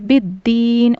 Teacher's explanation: दाल को तशदीद है तो सख्ती के साथ पढ़ेंगे। बिद दीन और या मद्दा को खींच कर पढ़ना है।